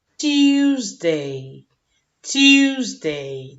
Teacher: También tenemos estrés en la primera posición.